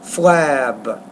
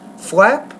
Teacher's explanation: when you put the B at the end, the vowel is actually longer in that sound than if you put the P at the end. Because the P is a voiceless consonant, it doesn't influence the vowel as much.